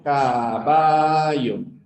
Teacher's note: El yeísmo es pronunciar la doble L como si fuera una Y. Lo pronunciamos igual.